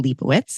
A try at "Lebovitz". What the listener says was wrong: No, V.